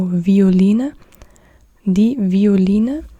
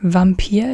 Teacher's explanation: This is not the typical German word. That's why you say it with a W sound.